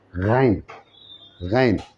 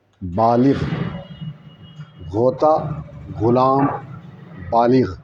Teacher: غین دیکھیے یہاں سے بولتے ہیں غین, جس کو کہتے ہیں غین. غین یہ حلق سے بولتے ہیں غین. یہاں سے جب تک اس کو یہاں سے نہیں بولیں گے یہ صحیح نہیں ہوگا.